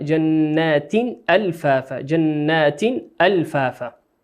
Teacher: التاء المفتوحة في جنات تنوين كسرتين، أتت بعده الهمزة، والهمزة من حروف الإظهار. نقولها جنات ألفافا.